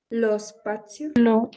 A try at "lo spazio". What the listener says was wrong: Benissimo.